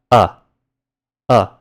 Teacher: This is like a really truncated version of the sound a to the point where it sounds very similar to the neutral a sound in English, like in the word what, but with your mouth just a bit more open, so like if you were to pronounce it as what instead of what. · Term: short vowel